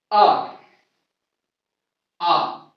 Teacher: आ बोला जाता है कंठ से